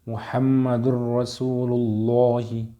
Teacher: محمد میم پہ تشدید ہے تو اس میں غنہ ہوگا، را کے اوپر تشدید ہے، اس میں ادغام ہوگا۔ · یعنی کہ اس میں ادغام بلا غنہ ہوگا